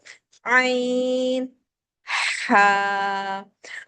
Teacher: आइन पढ़ते हुए हमारे हलक का दरमियान से चिपकता है